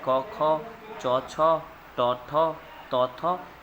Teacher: पहला वर्ण और दूसरा वर्ण जैसे क ख च छ ट ठ त थ ये सब अघोष में आ जाएगा